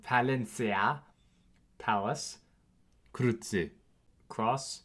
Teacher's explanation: One, as in German K, so a K sound. As well, in Latin loanwords, C also has a German Z sound, so a TS sound